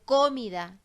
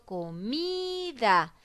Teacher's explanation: entonces la mi es la sílaba tónica la que tiene mayor fuerza de voz y está ubicada de penúltima palabra porque viene antes de la